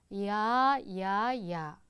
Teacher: 이중 모음은 시작하는 입모양과 끝나는 입모양의 다름을 익힙니다. 야는 이로 시작해서 아로 끝나게, 이야, 이야, 이야.